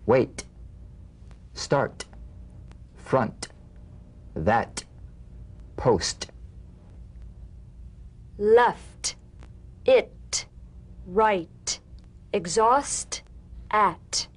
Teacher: The unvoiced T tongue front palatal stop consonant, cognate to the D. The same staccato springing action as the D drum beat with no voice forms the light tap of the T.